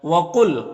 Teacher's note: قاف حروف مستعلیہ میں سے پر پڑھیں گے